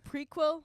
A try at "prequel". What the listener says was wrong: Prequel. Not a quill like a quill you write with.